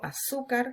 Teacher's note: Cuando yo digo azúcar, cargo la voz en la penúltima, palabra llana.